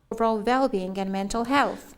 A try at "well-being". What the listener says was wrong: Well-being, so it's with a w, not with a v. So this is well-being. And also the stress is on well-being. Not not well-being, but well-being. So listen again to the mispronunciation there. Not, she says well-being, I believe.